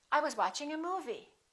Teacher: that's your first thought group the focus word would be movie